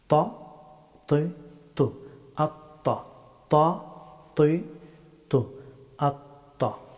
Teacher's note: ত হরফটি মুখ ভর্তি করে উচ্চারণ করতে হয়।